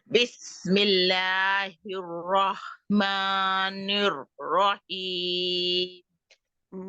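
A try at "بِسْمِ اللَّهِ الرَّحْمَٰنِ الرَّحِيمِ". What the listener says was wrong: निर्रहीम, हा, इस हा को भी ठीक करें, क्योंकि एक हा होगी और एक हा होगी तो वो तो फिर गड़बड़ है ना, क्योंकि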